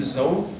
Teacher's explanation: this is the voiced alveolar fricative